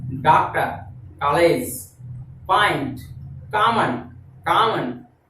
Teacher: न तो ये आ है न ये ओ है, ये दोनों के मध्य की ध्वनि है